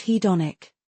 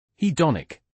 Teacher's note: Emphasis on the second syllable.